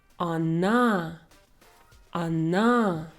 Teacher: If it comes before a stressed position, O sounds like a. Она, она. If we have a longer word and we have more syllables, for example, in the word молоко, we have 3 O's and all of them will sound differently. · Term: vowel reduction